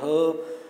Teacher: ठीक है, और ह है, ह कंठ के अंदर स्थित ह। ठीक है, वो किसी को टच नहीं कर रही आवाज़, डायरेक्ट जो है गले से आवाज़ आ रही है